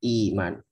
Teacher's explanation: Atau misalnya iman, asal katanya iman, ada dua hamzah, hamzah satu, hamzah dua. Nah, hamzah keduanya dihapus diganti ya maddiyah